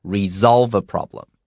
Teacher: 如果说今天你是 solve 这个动词，我们念 solve 是 s 的声音，嘶solve。但是如果你今天加了 re 也是解决的问题，但它念的时候就念 resolve， 所以这个地方的 s 会如果有 re 的时候会念成像 z 一样的声音